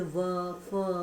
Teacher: एक होता है दंतोष्ठ, यानी कि दांत और ओंठ दोनों को स्पर्श करते हुए